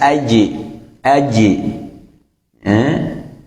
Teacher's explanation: kalau jim qalqalahnya itu tidak ditebalkan, tapi qalqalahnya itu qalqalah imalah. Qalqalah imalah ya, artinya harokat antara harokat fathah dan kasrah.